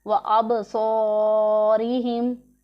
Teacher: اور با ساکن ہے، حروف قلقلہ میں سے ہے، تو اس سے پڑھیں گے اب نہیں پڑھیں گے اب.